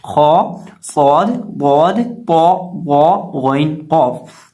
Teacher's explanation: ये 7 हरूफ मुस्तालिया है और इन्हें हम मोटा करके पढ़ते हैं। और गौइन भी हरूफ मुस्तालिया में से है, इसलिए गौइन को भी मोटा पढ़ेंगे।